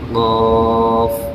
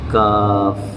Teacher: زبان کی جڑ سے قاف، اور یہ کاف نارمل